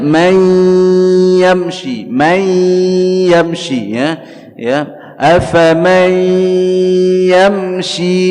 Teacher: Afaman ya, ada hukum idgham bi gunnah ya, ditahan 2 harakat dengan dengung di dalam khayshum